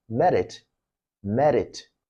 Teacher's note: In Japanese, it's pronounced with an alveolar tap, which is merit, merit.